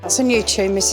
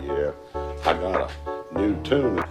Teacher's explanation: In British English, words like 'tune' or 'new' include a /j/ sound